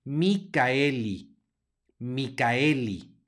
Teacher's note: no hace diptongo con la e por lo tanto se va a pronunciar la a y se va a pronunciar la e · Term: no hay diptongo